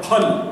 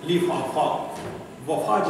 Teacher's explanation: फल बोलना है, वहां पर दोनों होठ सटाना है। लेकिन लिफाफा बोलना है तो होठ सटाना नहीं है